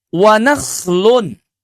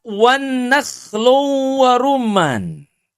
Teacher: Huruf nunnya ini suka ditasydid, jadinya wan nakhlun.